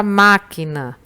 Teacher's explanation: Na palavra máquina, você pronuncia com mais força a sílaba ma. Ela é a sílaba que demora mais para a gente falar. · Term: antepenúltima sílaba